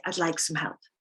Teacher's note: when we say i'd like some help we pronounce some very softly